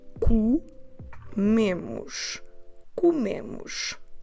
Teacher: this word has twice the letter O, and they are both unstressed O's, and we pronounce them both as U. And our stress is on the me.